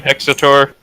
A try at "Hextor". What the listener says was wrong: You keep adding a vowel.